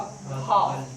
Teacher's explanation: और हा होता है कंठ से बोला जाता है